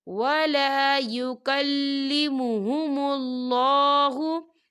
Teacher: اللہ کا نام جو ہے موٹا پڑھا جائے گا، پر پڑھا جائے گا، کیونکہ اللہ کے نام سے پہلے پیش ہے